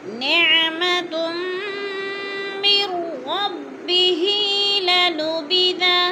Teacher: نعمتم 2 پیش، تا 2 پیش تم ادغام ہو رہا ہے. مر پہ بھی ادغام ہے، میم کو را کے ساتھ ملا کے پڑھیں گے، نون ساکن کو نہیں پڑھیں گے. اور ربی ہی کھڑی زیر ہے، 2 الف کے برابر اس کو کھینچ کر پڑھنا ہے.